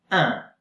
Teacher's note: A bit of air comes out of the nose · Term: nasal sound